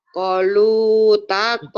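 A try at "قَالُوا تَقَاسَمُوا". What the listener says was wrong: bukan. Ko-nya panjang. Qalu taqasamu.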